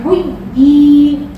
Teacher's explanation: Nah, jadi kalau tamkin itu ya bertasydid bertemu ya sukun. Dibaca panjang dua harokat ya. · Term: mat tamkin